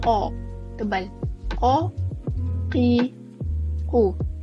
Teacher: Huruf qaf dia keluar dari pangkal lidah dan dekat dengan anak tekak. Jadi kita sebut dia qa, tebal.